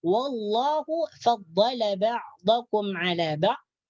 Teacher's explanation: Di sini lafdzul jalalah hukum bacaannya adalah tafkhim. Dibaca tebal sebab sebelum lafdzul jalalah ada huruf yang berbaris fathah atau atas.